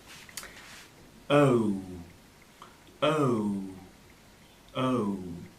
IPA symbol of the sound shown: əʊ